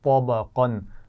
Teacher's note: طا موٹا ہے, با موٹا نہیں ہے اور قاف موٹا ہے